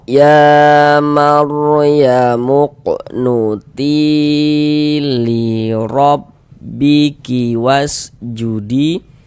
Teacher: Huruf ro ini memiliki tanda baca fathah ya, harakat fathah. Maka ini huruf ro kita baca tabkhim. Nah, kita baca tebal.